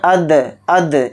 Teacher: दाल के ऊपर जज़म है तो इसमें क़लक़ला भी करेंगे, अद अद, इस तरह से।